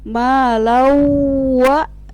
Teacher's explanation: itu tanwin bertemu dengan huruf wa, maka dibaca dengung. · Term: idgham ma'al guna